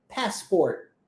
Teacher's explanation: Olha que interessante acontece nessa palavra passport. O T não é pronunciado. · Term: T sendo omitido